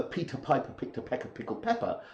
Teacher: in English you have more tension in the lips and you're forcing air out